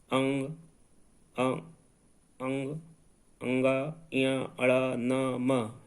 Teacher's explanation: इन वर्णों का जब उच्चारण करेंगे तो नासिका का ही सहारा लेना पड़ेगा, नासिका से वायु निकलेगी।